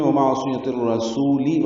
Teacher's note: ومعصیت الرسول عین ساکن پہ اظہار صاد پر ہے، یا کو جلدی سے پڑھنا ہے، تا کو اور رسول کی را سے ملانا ہے، ادغام شمسی ہوگا، را پر پڑھیں گے. وقفاً یا سین کو لمبا کر دیں گے اور لام ساکن پہ اظہار ہوگا.